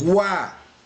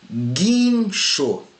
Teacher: Esse U, eu pronuncio o som do U. Então eu tenho aqui o som do U e o som do A nessa sílaba. Aqui tem ditongo.